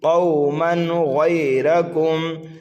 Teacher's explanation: تنوین کے بعد غین حروف حلقی میں سے ہے، اس لیے یہاں پر اظہار کریں گے